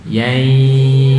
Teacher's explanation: Yai tidak perlu ditekan, cukup digunnahkan ya, tapi juga ada suara dari mulut. Yai. Nah, kalau ditekan nanti menjadi tasdid. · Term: idgham naqis